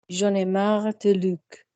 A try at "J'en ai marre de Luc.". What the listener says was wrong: Lovely. Less teeth though, even still.